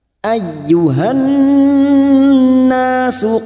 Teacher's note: Ayyuhan, berikutnya masuk pada alif lam samsiyah atau idgham syamsiyah dan masuk pada huruf nun yang bertasdid mendengung selama 3 harokat